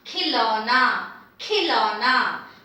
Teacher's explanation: I have the aspirated k, kh with iki matra, so ki, ki-lo-na.